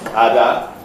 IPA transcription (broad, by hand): ɑdɑ